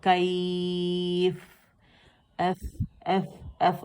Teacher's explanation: ہاتھ سامنے رکھیں گے آپ کو ہمس واضح فیل ہوگا اس کی ہوا، کیف، ایف، ایف، ایف، اور بہت زیادہ ہوا فیل ہوتی ہے، ٹھیک ہے.